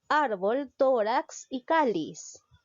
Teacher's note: En la sílaba ar, tórax en to y cáliz en ca. Todas llevan la mayor fuerza de voz en la penúltima sílaba.